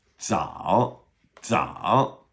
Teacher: 藻, that would be ZAO third tone, right? So that's our DZ sound.